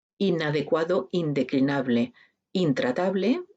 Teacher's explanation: aquí se manifiesta con una alveolar una nasal alveolar